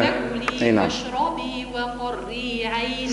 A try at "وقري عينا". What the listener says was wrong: شوية ترقيق الراء، وقري وقري وقري عينا.